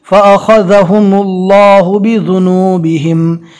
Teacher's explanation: ذال کو ادا کرتے وقت زبان کا کنارہ ہلکا سا باہر نکلے گا